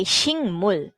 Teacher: So in that case, yung k, shik, yung k sound nagiging NG sound